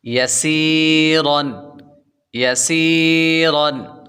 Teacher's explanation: را پر 2 زبر ہو تو را کو پر پڑھتے ہیں